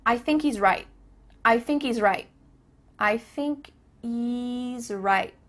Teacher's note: There's no H happening here. I thinky. Thinky.